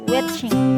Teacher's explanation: Kata ini memiliki vokal a, tetapi peserta mengucapkannya sebagai e, sehingga terdengar seperti watching. Perubahan vokal tersebut dipengaruhi oleh konsonan ch yang bersifat lebih depan, sehingga vokal bergerak naik dan maju untuk mempermudah transisi pengucapannya. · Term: asimilasi